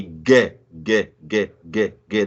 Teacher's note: there is a vibration of the vocal cords so you hold on to your vocal cords and you will be able to sense that vibration when you say get get get get get there is indeed a vibration there there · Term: voiced sound